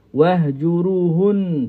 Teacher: Nun bersabdu ketika kita sambung dia kena baca dengan wajibul ghunnah. Dua harakat di sini wahjuruhun.